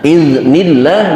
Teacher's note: jangan sampai timbul pantulan qalqalah sehingga terdengar bacaan iznillah